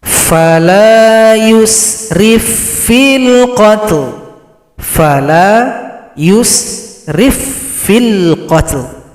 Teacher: Di sini ada lagi idgham, sekarang idgham mutamathilain. Huruf fa yang pertama tidak dibaca karena telah gabung pada huruf fa yang bertasydid huruf fa yang kedua. Kemudian di sini cara berhentinya lam disukunkan, berikan bunyi vokal.